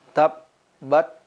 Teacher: huruf ta ketika dia sukun dia memiliki sifat khas yaitu mengeluarkan nafas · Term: sifat hamas